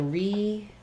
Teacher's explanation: We have stress on the pay syllable, and the first letter E will say a tense E sound. So there's a little secondary stress there because we're using that like in to redo, versus in something like repeat, we would do an I sound, repeat.